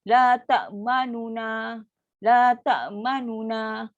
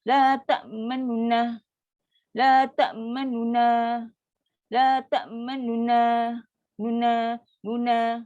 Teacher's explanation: huruf nun pertama yang berbaris dhammah pada depan tadi tu, dilafazkan sebahagian saja. Iaitu dengan kadar 1/3 harakat dan disebut dengan cepat. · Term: raum